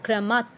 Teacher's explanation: ক্রমাৎ খণ্ডত, এর উচ্চারণ নামেই আছে যে খণ্ডত, মানে ত এর অর্ধ উচ্চারণ, খণ্ড উচ্চারণ। এর যে শেষে অটা আছে সেটা উচ্চারিত হবে না, তয় হসন্তর মতো উচ্চারণ হবে আর কি।